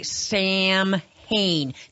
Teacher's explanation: we have that nasally nasty long a sound that other countries simply do not have